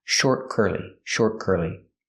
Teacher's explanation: We hear the T in short is a stop T also. Not short, but short.